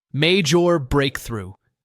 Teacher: Notice how native speakers often link major and breakthrough smoothly. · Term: linking